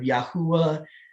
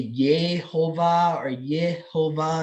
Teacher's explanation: they stopped using the Yah sound and they started using the Yeh sound